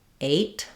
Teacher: my tongue is gliding and that vowel sound is made by movement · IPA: /eɪ/